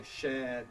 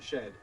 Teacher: ‘Shared’ and ‘shed’ then become a length-only minimal pair.